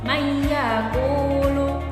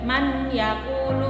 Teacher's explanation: Apabila ada nun sukun atau tanwin bertemu dengan ya, contoh mayyakulu. Jadi huruf nunnya itu seakan-akan hilang, atau huruf ya itu dimasukkan kepada huruf nunnya. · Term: idgham bi gunnah